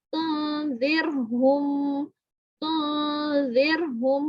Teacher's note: نون ساکن کے بعد زال ہے, یہ اخفا کا لفظ ہے, تو اس میں باریک یہ حرف ہے تو اس میں غنہ باریک ہوگا